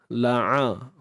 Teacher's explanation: huruf ain sempit tengah kerongkong.